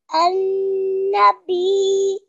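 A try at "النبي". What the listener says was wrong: So you really need to hear that ya sound very lightly, but you still need to hear it.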